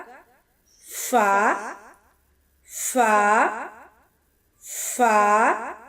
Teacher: اوپر والے دانتوں کا سرا نچلے ہونٹ کے شکم سے لگنے سے ادا ہوگا